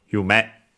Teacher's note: it's actually accented on the last syllable, Yume. Of course, this in standard Japanese, there might be different accents, positions of the accent because of dialects, but let's stick to standard Japanese, so Yume.